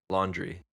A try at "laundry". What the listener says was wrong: No, it just sounded like you were saying laundry, like with a j. Yeah, laundry. Yeah. Laundry. Laundry.